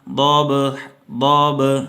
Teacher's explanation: اس میں با آ رہا ہے تو اس پہ آپ نے قلقلہ کرنا ہے، اس کی آواز کو دبانا نہیں ہے، یعنی ضبحا نہیں پڑھنا، ضب ضب، ٹھیک ہے۔